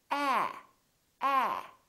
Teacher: so your lips are open and your tongue is down and your tongue is tense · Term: the a sound